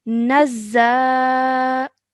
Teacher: So we're going to elongate the sound out of za for 2 seconds.